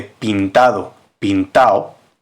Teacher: de las consonantes finales en este caso al final de palabra supresión de la d en los participios